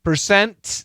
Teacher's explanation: the N kills the T